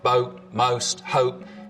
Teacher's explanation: the vowel sound in boat most hope starts with the tongue further forwards in the mouth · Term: goat fronting